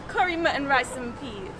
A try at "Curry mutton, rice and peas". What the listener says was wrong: When you say it, don't pronounce it so nicely. You do roughy. Curry mutton, rice and peas.